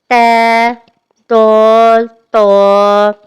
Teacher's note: ت ہلکا محسوس ہو رہا ہے، منہ میں ہلکا محسوس ہو رہا ہے۔ دال منہ سے درمیانی سا محسوس ہو رہا ہے، جبکہ تو منہ میں بھاری محسوس ہو رہا ہے، لیکن مخرج ایک ہی جگہ سے ادا ہو رہا ہے۔ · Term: حروف